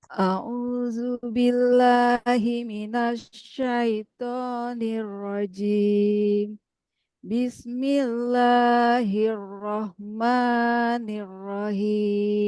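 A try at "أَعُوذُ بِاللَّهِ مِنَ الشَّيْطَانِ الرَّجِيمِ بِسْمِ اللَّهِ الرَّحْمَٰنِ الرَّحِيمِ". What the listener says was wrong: Nah, hati-hati matnya masih kepanjangan. Bana bana baununa binabina bainibuna a'udzu billahi minasyaitonir rajim.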